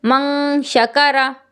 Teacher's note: اگر دیکھنا چاہیں تو جیسے من شکرا، تو من شکرا میں نون ساکن کے بعد شین ہے اور شین حرف اخفا ہے، تو اب یہاں پر آپ کو غنہ کرنا ہے